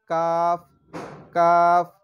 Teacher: কাফ হচ্ছে জিহ্বার গোড়া একটু সামনে থেকে